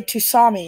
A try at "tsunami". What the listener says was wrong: Tsunami. You don't pronounce the T.